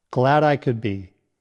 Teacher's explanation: Link glad I together for a natural flow.